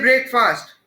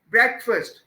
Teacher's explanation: उसके पहले वाले हिस्से को आप स्ट्रेस कर रहे हैं. आप कह रहे हैं breakfast, not breakfast.